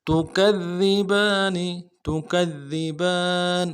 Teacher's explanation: با کے اوپر کھڑا زبر ہے، ایک الف مقدار میں کھینچیں گے، نون کو نرم سے ادا کریں گے۔ تکذبان، تکذبان، وقت کی صورت میں نون کو ساکن کریں گے۔